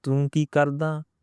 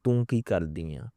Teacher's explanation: I'm pronouncing R sound properly, like a Punjabi Rara sound, like it's a rolling R